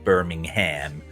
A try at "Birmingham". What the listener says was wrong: Yeah, we don't say the ham. We go Birmingham.